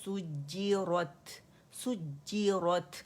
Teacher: جو مشدد لیٹر ہوتا ہے نا اسے کیونکہ 2 دفعہ ادا کرنا ہوتا ہے تو اس کا جماؤ ہم نے دینا ہے، نبر کرنا ہے اس کے اوپر ہم نے.